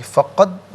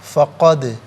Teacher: دال ساکن ہے لیکن حرف قلقلہ ہے، تو یہاں پر ادائیگی کے وقت آواز لوٹتی بھی محسوس ہونی چاہیے، فقد نہیں، فقد۔